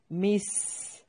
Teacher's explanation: मिल मिस्कीन, लाम को हिलाना नहीं है। मिस, सीन को सीटी के साथ, बारीक सीटी के साथ अदा करना है